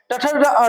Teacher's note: टठ अड़ इसका उच्चारण स्थान मूर्धा होता है